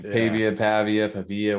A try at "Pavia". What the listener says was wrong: Avia, the P is silent.